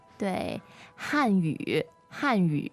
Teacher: So fourth tone and third tone, right?